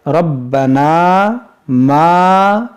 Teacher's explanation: الف سے پہلے زبر ہے، یہاں پر بھی الف مدہ ہے، ان دونوں کو کھینچیں گے ایک الف کے برابر